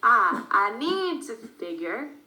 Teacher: So we don't stress the subject, I, we just say, I need to figure.